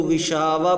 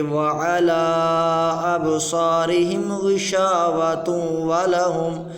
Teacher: وَعَلَىٰ أَبْصَارِهِمْ غِشَاوَةٌ، اس کو اگر ہم وقف کریں گے تو غشاوہ پڑھیں گے، اگر وقف نہیں کریں گے تو ایسے پڑھیں گے وَعَلَىٰ أَبْصَارِهِمْ غِشَاوَةٌ وَلَهُمْ، تا کو واو کے ساتھ ملا کر ادا کریں گے